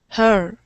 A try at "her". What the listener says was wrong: So sometimes I'm hearing, and I hear this very commonly, it almost sounds like hair, like almost like hair. I just want it to sound much more like her with that sound. Her.